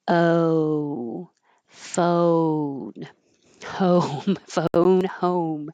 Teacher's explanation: the back of the tongue rises towards the ooh as your lips round. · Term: American O